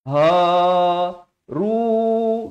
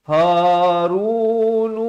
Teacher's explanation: Ha simpul makhrajnya di pangkal kerongkong. Ha ru dua harakat.